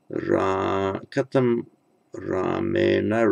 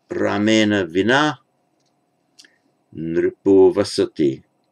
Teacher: retroflex N, because there's a R before with nothing to block the retroflexing